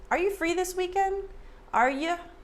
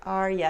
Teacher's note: A lot of times Americans reduce you to ya.